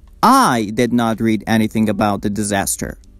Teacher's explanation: if I stress the first word which is the subject I'm focusing and emphasizing on the doer of the action